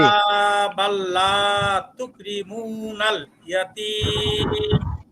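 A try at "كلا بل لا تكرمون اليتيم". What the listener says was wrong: মাশাআল্লাহ, এবার চমৎকার হয়েছে।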